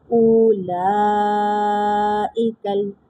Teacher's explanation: اب یہاں پہ حمزہ واو کے ساتھ مل کر پڑھا جائے گا کیونکہ یہاں پر واو مد کا قاعدہ لگ رہا ہے، اور اس کے بعد مد متصل کا قاعدہ بھی لگ رہا ہے کہ حروف مدہ کے بعد حمزہ اسی کلمے میں آ رہا ہے